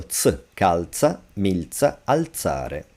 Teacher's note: When the letter Z follows L, that's also voiceless, so ts